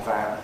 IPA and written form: væn (van)